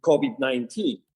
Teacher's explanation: he's kind of using a B sound instead of a V.